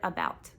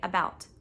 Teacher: Uh is one syllable and about is one syllable, but uh is just shorter and it's not stressed. About is the one that we emphasize. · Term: unstressed syllable